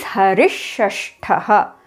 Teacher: Here the visarga changes to sh because it is followed by sh.